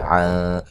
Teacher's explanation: نون ساکن کا باریک اخفا ہے